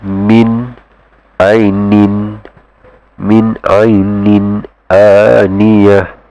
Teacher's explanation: The meaning to it basically is telling you to enunciate this tanwin clearly. You don't have to merge the sound into the next letter. Okay, and this ruling itself is called izhar.